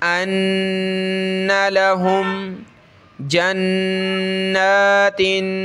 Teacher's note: नून पे गुन्ना है तशदीद की वजह से खींचेंगे और ता पे हमने नाक में आवाज़ पैदा करनी है इस तनवीन की वजह से